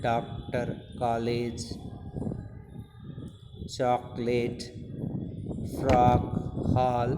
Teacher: हिंदी के 11 स्वरों के अतिरिक्त आ ध्वनि को भी हिंदी में सम्मिलित किया जाता है। इसका उच्चारण आ तथा ओ के मध्य का होता है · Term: आगत स्वर